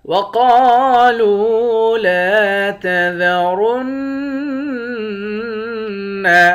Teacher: قاف کو موٹا بھی پڑھیں گے، ایک الف کے مقدار کھینچ کر بھی پڑھیں گے۔